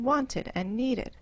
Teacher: the ending is pronounced as an extra syllable